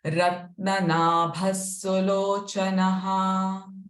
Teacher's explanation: Again, first Visarga sound sa, the last Visarga sound ha.